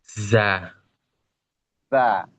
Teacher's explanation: Dia sama ujung lidah posisinya mendekat ke gigi seri bawah bagian belakang. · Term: zai